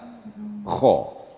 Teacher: Kalau kha makhrajnya adalah di ujung tenggorokan, ujung atas.